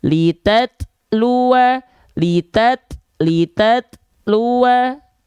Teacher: Pengucapan huruf ta disertai mengalirnya udara. Tidak dipantul namun sedikit tertahan suaranya.